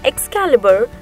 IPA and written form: ɛkˈskælɪbər (Excalibur)